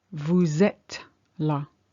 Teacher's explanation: as long as your voice goes up at the end, it's fine. It's a question.